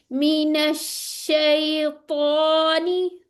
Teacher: शीन पे हंठ आगे नहीं आने